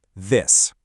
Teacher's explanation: That is voicing. The voiced th has that buzz and the voiceless one doesn't. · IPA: ð